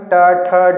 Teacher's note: देखेंगे जीभ जो है ऊपर जो है थोड़ी सी मुड़ रही है, मूर्धा का रूप ले रही है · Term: मूर्धन्य